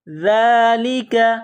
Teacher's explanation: یہ ذال ہے، زبان باہر نکالیں گے ذال کو پڑھتے وقت، ذال کے اوپر کڑا زبر ہے، ایک الف کی لمٹ میں کھینچنا ہے۔